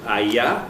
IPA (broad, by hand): ɑjɑ